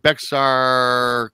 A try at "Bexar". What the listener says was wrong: It's actually Bear. The X is silent. It's Bear County, the way we pronounce it here in San Antonio.